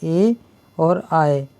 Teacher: ए और आए ये दोनों ऐसे वर्ण हैं जो ये स्वर भी हैं और इन्हें किससे बोला जाता है, कंठ से और तालव्य दोनों से बोला जाता है, जिन्हें हम कंठ तालव्य कहते हैं।